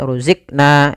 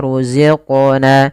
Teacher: Kemudian pada lafal qaf ada bacaan qalqalah. Yaitu suara qafnya dipantulkan.